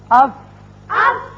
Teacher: اوپر والے دونوں دانت جب نچلے ہونٹ کے اندرلے حصے سے لگتے ہیں تو فا ادا